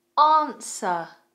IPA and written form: ɑːnsə (Answer)